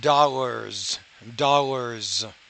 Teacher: when the s occurs after a voiced consonant at the end of the word it's going to sound more like a z